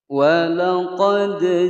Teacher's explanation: Walaqad ja'akum Musa bil bayyinati thumma attakhadhtumul ijla min ba'dih. Walaqad dipantulkan, walaqad qalqalah sughra